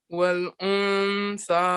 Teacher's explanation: try and hide the sound of the noon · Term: hiding the noon